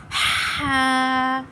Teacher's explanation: اس کو ایک الف کی مقدار دراز کرنا ہے، اس میں سانس ہماری باہر نکلنی چاہیے